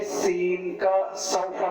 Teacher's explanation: इनके अदा करते वक्त ज़बान की जड़ के हिस्से का ताल्लुकी तरफ ना उठना बल्कि नीचे रहना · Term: बारीक